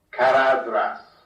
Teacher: that is voiced th as in then, not voiceless as in thin